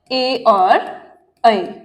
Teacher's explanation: इन स्वरों का उच्चारण जीभ के अग्रभाग से